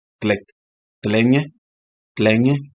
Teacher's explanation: So the T and L go together like tlenye. There is nothing in between.